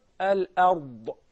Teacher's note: We have the ra in the tafkhim condition and the dad as well.